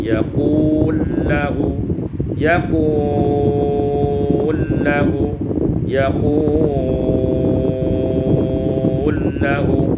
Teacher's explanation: Ayat 117 yaqulu lahu, idghamul lam fil lam, diidghamkan lam pertama pada lam yang kedua menjadi yaqul lahu, yaqul lahu, yaqul lahu, iaitu dibaca dengan qasar, tawassut dan isbah.